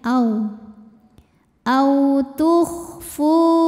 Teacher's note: Ada mad tabi'i zahiri karena ada waw sukun yang sebelumnya berbaris dhammah. Cara membacanya huruf fa ini kita panjangkan 2 harokat.